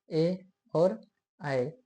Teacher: का कंठ तालव्य स्वर, इनका उच्चारण स्थान कंठ और ताल दोनों से होते हैं, ए और आए। क्योंकि ए की रचना आ और ई से मिलकर हुई है, आ का उच्चारण स्थान कंठ होता है तथा ई तथा उच्चारण स्थान ताल होता है।